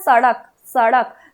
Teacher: अब आते हैं दंत, तो हमने एक नाम रखा है तालव्य श, दंत स, मूर्धन्य स। दंत स यानी जिसका उच्चारण करते वक्त आपका जो जिह्वा है वो कहाँ जाए, दंत में।